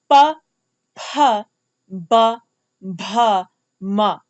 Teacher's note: For all of these consonants, my lips had to touch each other for me to get the ba sound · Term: labials